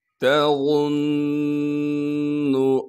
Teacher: تا کو باریک کر کے پڑھیں گے، غاں کو موٹا کر کے پڑھنا ہے